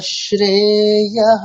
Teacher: বিসর্গ আনচেঞ্জ থাকবে, I mean হকারের মতো উচ্চারিত হবে